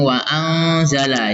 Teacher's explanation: nun matinya disamarkan dan berdengung